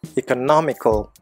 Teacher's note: அந்த நா அப்படிங்கிற சிலபிளில் ஸ்ட்ரெஸ் கொடுக்கணும். எக்கானமி, எக்கனாமிக்கல். · மூணாவது சிலபிளில் தான் ஸ்ட்ரெஸ் வருது. எக்கனாமிக்கல், அந்த நா அப்படிங்கிற சிலபிளில் ஸ்ட்ரெஸ் கொடுக்கணும்.